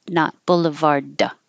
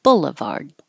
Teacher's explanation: And that little mark means to hold your tongue so that you don't release the D